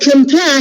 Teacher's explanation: this word is divided or includes two syllables, and the first syllable is unstressed, whereas the second syllable is stressed